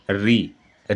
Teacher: हिंदी में ऋ का शुद्ध प्रयोग नहीं होने के कारण र और इ के उच्चारण के रूप में प्रयोग में लाया जाता है।